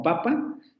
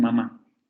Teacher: Tenemos una oral en palabras como papa y luego tenemos una vocal nasal como en mamá. En la palabra mamá, la primer vocal es una vocal nasal.